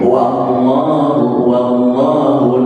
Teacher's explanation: waw dipatah, bunyinya wa, bukan wo